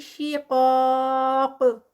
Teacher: قاف جو ہے وہ ہیوی اور ساتھ میں الف مد ہے اور ساتھ 4 کاؤنٹس کا اسٹریچ ہوگا اسٹاپ پہ اور قاف اینڈ پہ قلقلہ پھر ہوگا. فَسَيَكْفِيكَهُمُ اللَّهُ فَسَيَكْفِي پہ 2 کاؤنٹس کہم اللہ اللہ لفظ جلالہ سے پہلے پیش تو یہاں پر ہیوی پڑھا جائے گا اور یہاں پر 4 کاؤنٹس کا کیونکہ آگے اسٹاپ آ گیا ہے تو 4 کاؤنٹس کا اسٹریچ.